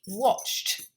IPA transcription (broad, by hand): wɒʧt